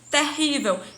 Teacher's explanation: eu tenho ter, que é átona, eu tenho ri, que é tônica, eu tenho vel, que é átona novamente.